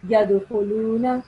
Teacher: So dal should produce a slight jerking sound. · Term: Kalkala